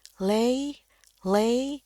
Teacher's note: lay yang paling tinggi ini nadanya